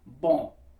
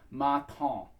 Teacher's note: So that indicates that on, that back of the throat through the nose, sort of French sounding sound